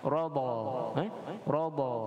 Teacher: Huruf ra dibaca dengan tebal, huruf dad dibaca dengan fathah.